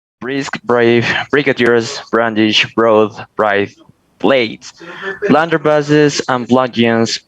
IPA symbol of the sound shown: b